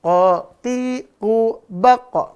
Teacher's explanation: dia enggak berhembus napas udaranya ya